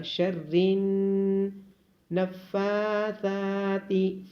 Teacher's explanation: فا اور ثا کو لمبا کیا جائے گا کیونکہ فا اور ثا کے اوپر کھڑی زبر ہے. ثا کو نرمی کے ساتھ ادا کیا جائے گا.